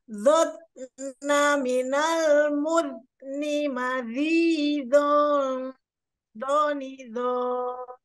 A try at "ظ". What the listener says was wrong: Ya, masih belum ngalir, Ibu. Zon, zon, zon, zon. Harus ngalir.